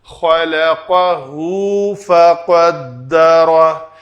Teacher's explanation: جب بھی ہا کے اوپر الٹی پیش ہو تو اس کو واو مدہ کے برابر یعنی دو حرکت کے برابر پڑھا جائے گا۔